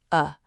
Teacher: The schwa is the single most common vowel sound in the entire English language, and it sounds like a very relaxed, quiet uh